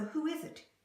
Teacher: I took the z sound in is and I moved it over to the vowel sound that was a consonant-to-vowel link.